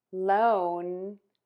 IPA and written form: loʊn (LOAN)